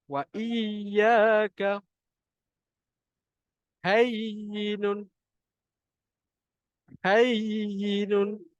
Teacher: Ya, tengah lidah tu kena naik ke atas.